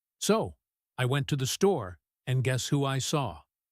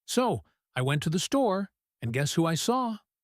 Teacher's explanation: Did you hear how my voice went up at the end? That signals a question and anticipation.